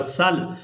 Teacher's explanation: وقف کی صورت میں لام کو ساکن کر دیں گے، سا کو لام ساکن کے ساتھ ملائیں گے، سا لام زبر سل.